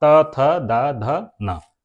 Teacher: हमारी जीव दांत से टकराती है इसलिए इनको हम लोग दंत व्यंजन कहते हैं